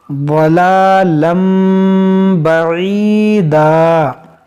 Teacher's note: यहाँ पर देखें थोड़ा मीम बना हुआ है, यहाँ पर हम इक़लाब करेंगे। इस तनवीन के अंदर जो नून साकिन है उसको हम मीम से बदल कर पढ़ेंगे,